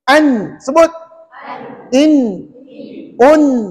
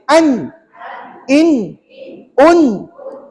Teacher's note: Hujung lidah tu kena pada gusi. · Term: sebutan nun